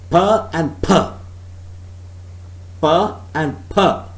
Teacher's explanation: one is aspirated, the other one is not aspirated. First is unaspirated, second per is aspirated. But both are the allophones of the phoneme per.